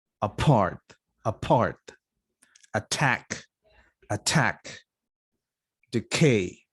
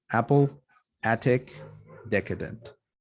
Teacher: there is no aspiration here why because the consonant is not followed by a stressed vowel